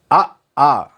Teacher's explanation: அ ஆ அங்காப்பு உடைய வாயை திறந்தாலே ஆவும் ஆவும் வருதுன்னு அர்த்தம்